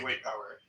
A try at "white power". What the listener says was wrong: You sounds like you're saying white poverty.